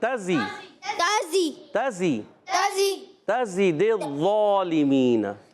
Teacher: زا سیٹی کے ساتھ ادا ہوگا